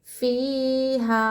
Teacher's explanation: مد منفصل کو 4 الف کی مقدار کھینچیں گے